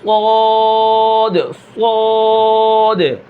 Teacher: یہاں پر زبان کی جڑ تو اٹھے گی لیکن یہاں پر زبان کا بیچ بھی اوپر کی طرف لپٹ جاتا ہے